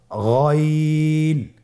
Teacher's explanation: হারাফটি উচ্চারিত হয় কন্ঠনালীর শেষ ভাগ হতে